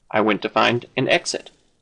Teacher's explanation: Notice there is a liaison effect. The N in an attaches itself to the vowel phoneme